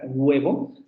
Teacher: al principio de la palabra web o se dan cuenta que la parte posterior de su lengua se echa un poco hacia la zona vela y redondean los labios vibran las cuerdas vocales y es esa forma esa posición de